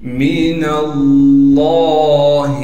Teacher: نون کو آگے لام سے ملا دیں گے اس لیے کہ لام پر تشدید ہے۔ لفظ اللہ کے لام سے پہلے ایک اور لام بھی ہے اور اس سے پہلے ایک الف بھی ہے، یعنی لفظ اللہ کے لام میں دو لام ہیں، لیکن ان دونوں پر زبر زیر پیش کچھ نہ ہونے کی وجہ سے انہیں ہم یہاں پر نہیں پڑھیں گے۔ · دوسرے لام پر تشدید ہونے کی وجہ سے تھوڑا ٹھہراؤ کریں گے اور لام پر کڑا زبر ہونے کی وجہ سے ایک الف کے مقدار کھینچیں گے۔